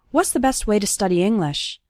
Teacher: You can see that the word to becomes ta, and it's just barely pronounced at the end of way.